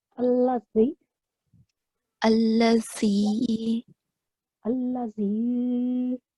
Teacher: the point of articulation is basically the tip of the tongue touches the upper frontal teeth. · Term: zal